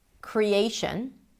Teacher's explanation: The cre is a secondary stress because you can hear there is a pure vowel there. So it's going to be longish, but not as long as the A, create.